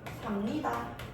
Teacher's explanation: 니은이 비읍에 영향을 주면 비읍은 뭘로 바꿔요? 미음으로 바뀌겠죠? 삽니다. 이렇게 바뀐다는 것입니다. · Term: 역행동화